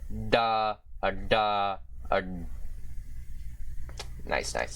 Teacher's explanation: This is the retroflex plosive, or D with a retroflex hook, which is, of course, the voiced retroflex plosive consonant